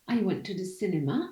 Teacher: I have two sentence stresses, went and cinema. And the last one is cinema.